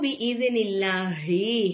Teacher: நஸ்ஸலஹு அலா கல்பிக பிஇذனில்லாஹி அல்லாஹ்ங்கிற வார்த்தைக்கு முன்னாடி உள்ள எழுத்துக்கு வந்து ஜேரு வந்த காரணத்தினால அல்லாஹ்ங்கிற வார்த்தையை நம்ம மெல்லினமா உச்சரிக்கணும்